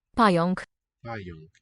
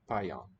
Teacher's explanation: Even though the unk would seem to be a heavier syllable, it's not accented.